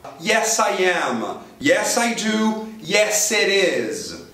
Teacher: seu ouvido privilegiado acusou Z em posição final no is